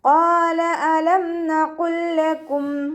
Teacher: ഖാഫ് ഇസ്തിഅലാന്റെ ലെറ്ററാണ്, തഫ്രീം ചെയ്തിട്ട് ഉച്ചരിക്കുക.